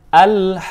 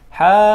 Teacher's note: 5 harokat kita baca panjang dan di ujung nanti kita agak tekan, ya.